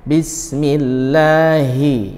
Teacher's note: hi huruf H dari pangkal tenggorokan atau disebut dengan halqi ya, itu aqsal halqi.